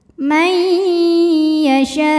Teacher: maka nun dileburkan ke ya disertai bunyi dengung.